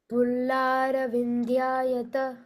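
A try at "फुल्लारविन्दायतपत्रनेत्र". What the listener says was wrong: Not Vindya, it is Vindayata. Pullara Vindayata. Aravinda. Aravinda means lotus. No, not Vindya. Pullara Vindayata.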